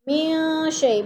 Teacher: من شیء، من پہ اخفا ہے، نون ساکن کے بعد شین حروف اخفا میں سے ہے تو ادھر اخفا کریں گے، آواز کو ناک میں چھپا کر پڑھیں گے